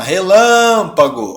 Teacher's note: Não é a última, não é a penúltima, é a antepenúltima. Ou seja, essa palavra é uma proparoxítona